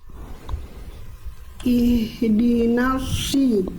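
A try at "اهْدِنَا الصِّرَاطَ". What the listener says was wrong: Oke, sedikit lagi, dorong lagi lidahnya kayak tadi bunda. Lagi dorong lagi, belum kerasa lidahnya didorong ke dalam kayak mau nelan sesuatu.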